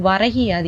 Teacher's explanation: இந்த வரகுல உள்ள கு வந்து கீயா மாறுது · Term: குற்றியல் இகரம்